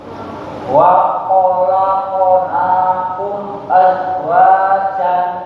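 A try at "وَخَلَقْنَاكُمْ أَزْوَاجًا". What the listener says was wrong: Kumnya ditahan sedikit, Pak. Wa khalaqnakum azwajan.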